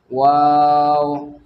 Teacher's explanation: उसके बाद में वाव, अब वाव जो है देखिए दोनों होठों का यानी दोनों होठों को ना मिलाने से वाव अदा होता है, और दोनों होठों को आप मिला देंगे तो बा अदा हो जाएगा।